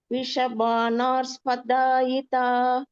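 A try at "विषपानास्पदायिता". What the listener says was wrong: இரு கிடையாது, விஷபானாஸ்பதாயிதா. சோ அந்த இரு அடிச்சுடுங்கோ.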